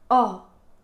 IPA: ɔ